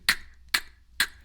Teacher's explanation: So the same way, I know this is going to sound a little hypocritical, but you know how we tried to take the aspiration, the breathing out from the consonant sounds, like the k, k, k. We try to make it as dry and unaspirated as possible.